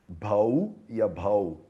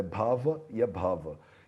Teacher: Bhau e abhau também eles falam, né? Muitas vezes a consoante v, ela é pronunciada como u